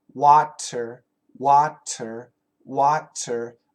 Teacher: it's not a d it's a flap T but it's very similar to a d